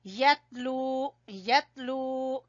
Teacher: تا کے اوپر قلقلہ نہیں کرنا ، یتلو نہیں پڑھنا، یتلو، لام کو کھینچیں گے واو مدہ